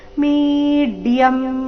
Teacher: ದೀರ್ಘ ಆದ ನಂತರ ಅರ್ಧ ಡ ಪೂರ್ತಿ ಯ ಸೇರಿ ಸಂಯುಕ್ತಾಕ್ಷರ